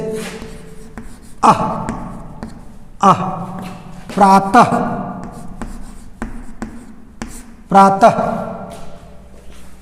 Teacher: अब देखिए विसर्ग, विसर्ग का उच्चारण तो आप जानते ही हैं, ये ह जैसा उच्चारण होता है। अचानक झटके के साथ ह का उच्चारण होता है